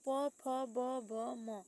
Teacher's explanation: प फ ब भ म को ओष्ठ के द्वारा बोला जाता है